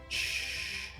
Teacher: prepalatal fricativo sordo, pues era el fonema que correspondía a la X, como cuando se llama al silencio a alguien.